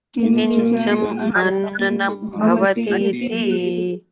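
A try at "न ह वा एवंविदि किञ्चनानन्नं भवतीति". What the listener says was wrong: So it is ananam, not anannam, ananam. Kimcha na anannam bhavati iti.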